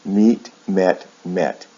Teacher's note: the last one actually ends with a t sound instead of a d sound